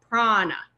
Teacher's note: And this also in common currency, if you know the clothing brand Prana, you notice they make the A in the middle a capital A, and they make it a capital A because it's meant to be a long ah. Sometimes you'll see a long ah written with a capital, Prana.